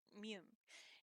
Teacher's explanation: this sound is bilabial which means that the lips must meet to make this sound